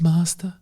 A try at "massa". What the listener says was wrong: Massa. There's no T. Massa, yeah. Please, massa.